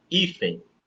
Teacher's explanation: A palavra hífen é uma paroxítona, porque o I é mais forte.